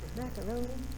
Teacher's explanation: There are words like macaroni, the mac and the roan, we kind of equally stress.